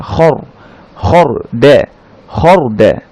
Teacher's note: র সাকিনের আগে যদি আ সাইন থাকে অর্থাৎ ফাতহা থাকে, তাহলে র সাকিনটাকে আমরা একটু মোটা করে পড়বো, খর খর বলবো না আমরা, খর খর দ্যা খর দ্যা।